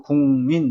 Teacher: 앞이나 뒤에 비음이 있으면 같이 비음으로 바뀝니다. 국민, 민이 비음이기 때문에 국이 궁으로 바뀝니다. 그래서 국민 이렇게 됩니다. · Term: 비음화